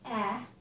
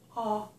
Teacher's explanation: you can see the difference between eh, with my mouth open, and aw. My mouth is open here too, isn't it? Aw. But my lips are rounded. So, eh, aw.